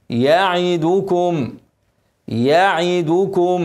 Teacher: ميم ساكنه بعدها ميم متحركه ادغام مثلين صغير وهنن حركتين